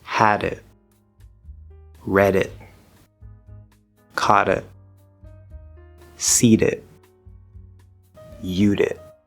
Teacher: it's actually a little easier and faster to move between the two words when we just flap instead of having to build up the air and release it. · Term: flapped D